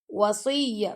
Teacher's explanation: यहां पे इदगाम और गुना हो गया। वसया स्वाद को हमने मोटा पढ़ना है और स्वाद को हमने या से मिलाना है